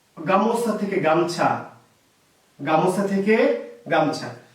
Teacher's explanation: স্বরটা লোপ পেয়েছে কোথা থেকে, মাঝখান থেকে। এর নাম মধ্য স্বরলোপ